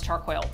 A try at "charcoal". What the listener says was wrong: That's charcoal. There's no I. Char. Coal. Charcoal.